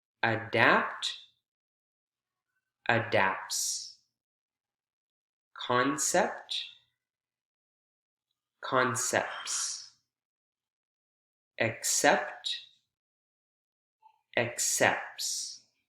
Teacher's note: you can hear the aspiration and there's no interruption at all because the T sound is omitted · You can hear the P, the aspiration in the voiceless P, and the T never comes into play. If it were, then you'd kind of have to abbreviate the aspiration with the P sound.